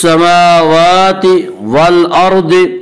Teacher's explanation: वल अर्द की रा को पुर पढ़ेंगे। इसका कायदा है कि रा साकिन से पहले अगर ज़बर और पेश आए तो रा को पुर पढ़ेंगे।